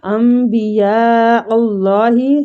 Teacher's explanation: یا پہ جو مد ہو رہی ہے یہ مد واجب متصل ہو رہی ہے